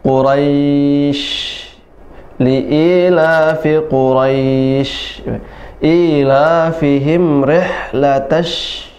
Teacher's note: Jadi tertahan tapi keluar, keluar dari atas, dari atas pertengahan lidah, ya, dari celah-celahnya. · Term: huruf shin